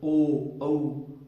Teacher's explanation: ओ और औ का उच्चारण करते समय कंठ और ओष्ठ का प्रयोग हो रहा है स्पष्ट रूप से। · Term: कंठोष्ठ